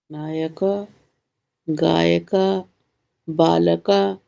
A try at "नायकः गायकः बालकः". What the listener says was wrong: विसर्ग नहीं आ रहा है। मतलब आ के बाद प्राणवायु को छोड़ना है। छोड़ के पकड़े नहीं रहना है, केवल छोड़ देना है।